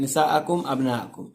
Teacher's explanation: تو جب مد کے بعد حمزہ اسی کلمے میں آ جائے تو وہاں ہوتا ہے مد متصل، 5 الف کے برابر کھینچیے گا